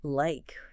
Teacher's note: your mouth glides through an A movement, starting wide and closing up.